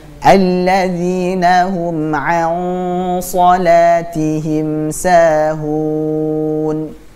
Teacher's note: Di sini ada hukum bacaan ikhfa. Jadi ikhfa di sini antara nun sukun bertemu dengan huruf shad. Dan shad itu termasuk huruf tebal, maka gunnahnya, dengungnya kita tebalkan. Alladzina hum an, jadi bukan an shalah tapi an, dan siap-siap ke makhrajnya huruf shad.